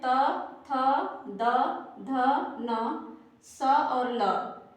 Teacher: इनका उच्चारण दंत से होता है